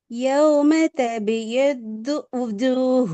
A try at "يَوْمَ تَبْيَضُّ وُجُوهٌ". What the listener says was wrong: இல்ல ஊ தான் வருது உங்களோட சவுண்ட். ஊ ஊ வு ரெண்டு மாதிரி ஓதி பாருங்களோ. அலிஃபையும் ஓதி பாருங்க, ஊவையும் ஓதி காட்டுங்க அப்பா. இல்ல இடத்துல ஊ வச்சு டோன்ல நீ ஓதி பாருங்க, அப்பதான் அவங்களுக்கு அந்த வேறுபாடு வரும்.